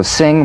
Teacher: the ng is a voiced tongue backed soft palate nasal consonant so sing with the back of the tongue in contact with